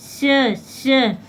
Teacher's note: जब हम श का उच्चारण करते हैं तो हमारी जीभ जो है आगे जो हमारी तालु है वहाँ पे जाके टच होती है